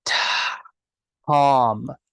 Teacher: you start by whispering and then you turn volume on halfway through the sound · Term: aspiration